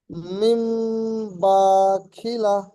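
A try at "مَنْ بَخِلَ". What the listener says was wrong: মিম নয়, মাম, মাম বাখিলা। এখানে জের থাকলে, যদি মিমের নিচে জের থাকতো তাহলে হতো মিম বাখিলা। এখানে জাবার আছে, তাই মাম বাখিলা।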